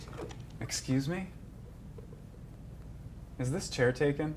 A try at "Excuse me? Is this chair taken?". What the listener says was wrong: Not enough voice. Not enough voice.